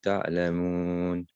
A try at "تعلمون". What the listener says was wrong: لو كنتم تعلمون. Make the eye a little bit more clear. It sounded almost تعلمون. Almost like a hamza. تعلمون.